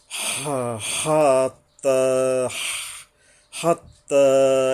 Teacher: হা, এই যে হা উচ্চারণে সাবধান হবে। লম্বা হা, বড় হা উচ্চারণে গলায় কিছুটা শোষ হয়, একটু সময় লাগে।